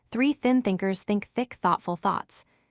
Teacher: For the voiceless th, it has no vibration in your throat. Your tongue stays between your teeth and the air flows freely.